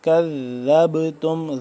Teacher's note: ذال کو نرمی سے اور کاف کو باریک پڑھیں گے. کذبتم، ذال با زبر ذب، جب آگے ذال مل رہا ہے با کے ساتھ تو یہاں اس با پہ قلقلہ ہو رہا ہے.